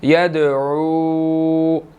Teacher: आइन के बाद वाव मद्दा है, इसको हमने 1 सेकंड लंबा करना है